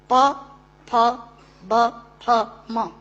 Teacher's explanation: दोनों होंठ मिलाकर बोले जा सकते हैं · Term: ओष्ठांग